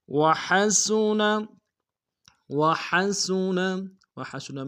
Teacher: والصالحین، وحسن، وحسن، وحسن میں ہاں کو ہرائی سے ادا کریں گے، سین کی سیٹی باریک ہوگی